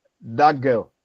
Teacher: So you realize that the t becomes k.